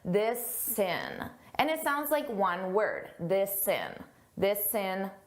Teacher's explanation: I can take that s sound and I can add it to the beginning of in because it begins in a vowel.